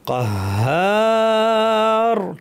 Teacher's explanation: কাহার টেনে আমরা র কে ভারি করে থামবো · এখানে হা এর পরে আলিফ আছে টানতে হবে।